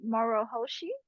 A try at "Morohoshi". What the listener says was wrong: Just roll the R a little bit.